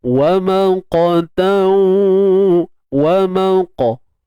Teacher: huruf qaf ni bersifat isti'la, tebal Jadi kita kena angkat pangkal lidah kita dalam ni. Pangkal lidah kena pastikan terangkat untuk mendatangkan suara tebal pada qaf ini.